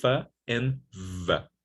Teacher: Labial dental, when you use lower lip and upper teeth, we have two labial dental fricatives, f and v.